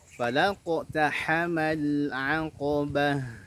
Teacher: Maka kita baca falaqtahamal aqabah. Nah, ha punya sifat rokhawah di antaranya, alirkan bunyi huruf ha-nya